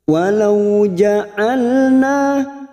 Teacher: Ja'al huruf ain memiliki sifat tawasud